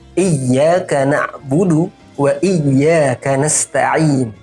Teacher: Pada ayat ini sering kesalahan itu terjadi pada nabr. Nabr itu adalah penekanan yang harus kita lakukan pada huruf ya bertasydid. Jadi ditekan iyyaka na'budu wa iyyaka nasta'in.